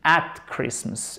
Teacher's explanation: Et pas hat. Faites pas le H aspiré